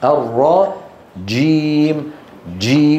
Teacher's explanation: بيكون المخرج مقفول ثم ينفتح وذكرت منذ ايام يسم يسمونه في علم الاصوات انفجاري اها انفجاري